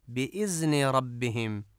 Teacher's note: بِإِذْن میں ذال کو زے پڑھا جاتا ہے